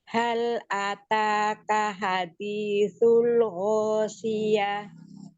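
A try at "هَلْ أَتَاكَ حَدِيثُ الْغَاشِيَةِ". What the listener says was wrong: Tapi yang ini hadisunya kurang tipis. H-nya kurang tipis.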